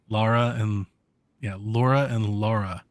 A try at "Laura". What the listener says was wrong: Well, okay, so you're saying Laura. It's Laura. It sounds like you say Lora, Laura. Laura. with R versus Lara.